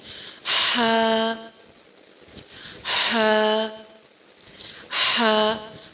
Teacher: اور ہا کے لیے زبان کو آپ تھوڑا سا سافٹلی پیچھے حلق میں پش کرتے ہیں تاکہ درمیان حلق میں سے، سینٹر آف تھروٹ میں سے ہم ہا کی آواز کو آسانی سے نکال لیں